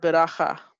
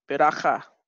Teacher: All right, so the initial schwa, or the schwa that begins a word, is always vocal. So the schwa under the bet, it's beginning a word, so it's vocal, it's pronounced. All right, and you can see it's an open syllable.